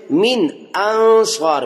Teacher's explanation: پہلے نون میں آواز کو ظاہر کیا اور دوسرے نون میں آواز کو چھپایا، کیونکہ آگے نون ساکن کے بعد صاد آ گیا ہے. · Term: اخفا